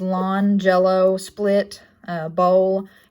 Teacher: it is a voiced and an alveolar liquid. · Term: Lowercase L